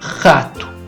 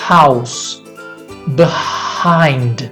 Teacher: O H pode ter dois sons. Um som aspirado, como na palavra house.